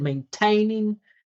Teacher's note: he made that T stand out more than the vowel.